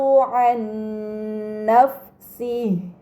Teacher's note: nun sukun dibaca secara melebur dengan gunnah yang dipanjangkan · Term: idgham bi gunnah